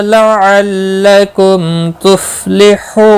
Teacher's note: میم ساکن کے بعد تا آیا ہے، اظہار شفوی ہوگا، غنہ نہیں کریں گے